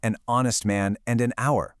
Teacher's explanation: And the exact same logic works for an honest man and an hour. The H is silent, so the first sound you actually hear is a vowel.